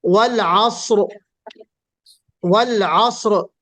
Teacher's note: अस कहते वक्त जुंबिश नहीं बल्कि सीटी बजेगी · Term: सफीर